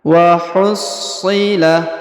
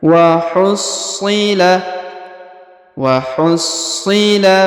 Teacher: Huruf so atau si di sini berharokat tasdid, maka kita tahan dan kita tekan.